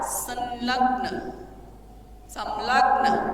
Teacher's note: लेकिन हम पूरा म का उच्चारण नहीं करते ना, संयोग, क्योंकि वो तो नासिका से हवा वायु जो है निकल रही है ना · म की जगह बन गया अनुस्वार